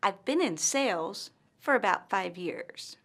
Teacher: pauses after the word sales and 5 years. You should also notice that the pause follows the words with the most stress.